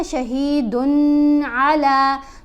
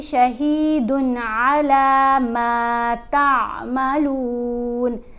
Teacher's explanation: دن کے اوپر ہم نے غنہ نہیں کرنا